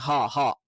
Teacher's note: ഇത് തൊണ്ടയുടെ താഴ്ഭാഗത്ത് നിന്ന് വരുന്ന ഹും എന്നുള്ള ഒരു അക്ഷരാണ്.